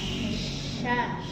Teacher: jadi keluarnya dari tengah lidah kemudian ada udara menyebar udara udara yang menyebar di dalam mulut ya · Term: syin